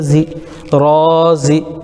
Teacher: زا کے نیچے زیر ہے، زیر کو جلدی پڑھیں، تھوڑا بھی نہ کھینچیں. معروف پڑھیں، مجہول آواز سے بچیں، زیر کی آواز نیچے کو جاتی ہے